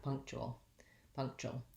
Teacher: we end with that syllabic l it's got a little schwa before it · people might say it more like punk tool tool with just an ooh and you need the glide